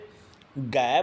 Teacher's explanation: और जैसे घै बोलते हैं तो घै में अपनी जीभ जो है वो नीचे ही रहती है, वो अपने तालु को स्पर्श नहीं करती